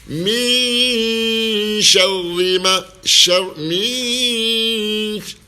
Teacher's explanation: Kita sembunyikan huruf ikhfa ini, huruf shin ini ke dalam nun sakinah dan didengungkan. Min syarri ma, min, dua harakat kita dengungkan.